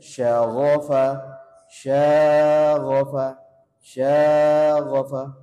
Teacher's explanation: Cukup 2 harokat aja, jangan terlalu panjang.